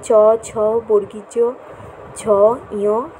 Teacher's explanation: ফুসফুস থেকে আগত বায়ু অগ্রতালুতে বাধা পায়, তাই এগুলোকে তালব্য ব্যঞ্জন বলে।